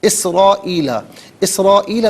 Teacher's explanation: Minimum اس کو 3 سے 4 حرکات کی مقدار کھینچ کر پڑھنا چاہیے، اور میکسیمم اس کو 5 سے 6 حرکات کی مقدار کھینچ کر پڑھ سکتے ہیں۔ اسرائیل، اسرائیل میں را پر زبر ہے، را کو پر کر کے پڑھیں گے، الف مدہ اوپر مد کی علامت، یہ مد متصل ہے، مد واجب بھی کہتے ہیں، لازم بھی کہتے ہیں۔